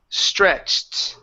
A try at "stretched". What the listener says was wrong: Now give me a T at the very end.